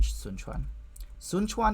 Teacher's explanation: I would probably just write that with an N, sun chuan. And it's like further back than a regular N, but it's not a separate phoneme. It's just an allophone thing. · this is a postalveolar affricate, ch, so that M is labial, and I want it to move back. So I want it to be sun. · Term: homorganic nasal assimilation